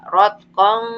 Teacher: makanya disamarkan bacaannya karena tanwin menghadapi huruf fa. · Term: ikhfa